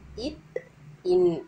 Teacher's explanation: நுனியை பொருந்துவதால் நாக்கின் நுனி அன்னத்தின் நுனியை பொருந்துவதால் இத் இன் இது பாத்தீங்கன்னா மேல் அன்னமும் நாக்கோட நுனியும் பொருந்துவதால் பிறக்குது